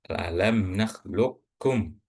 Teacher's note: Jadi, qalqalahnya enggak perlu dibaca tapi langsung ee alam naklukkum. Huruf pertama huruf qof itu langsung dimasukkan ke huruf gaf.